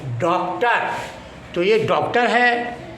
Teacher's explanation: ये आ और ओ के बीच की मात्रा होती है। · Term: आगत